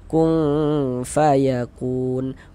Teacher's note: bagian kung itu suaranya kita tahan, kita panjangkan sepanjang dua harokat · Bunyi nun sukunnya kita samarkan, kemudian kita dengungkan. Nah, dia masuk pada ikhfa hakiki awsat.